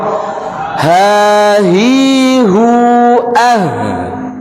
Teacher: Ha, kedua pita suara terbuka, tidak menyempit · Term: ngeplong